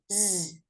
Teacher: if you put your hand again on your throat, z, you should feel vibration